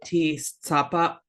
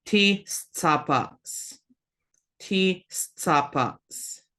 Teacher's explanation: notice you've got that glottal stop that just kind of stops it